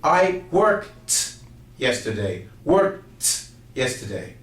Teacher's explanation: the word itself is spelled with a D. Unfortunately, when we speak, it sounds like a T.